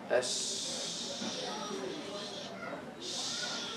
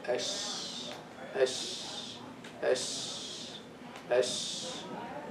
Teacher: So the sheen is from the middle part of the tongue without touching the roof.